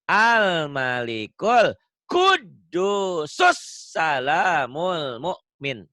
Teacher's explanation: Kudus, nyamber, double dalnya.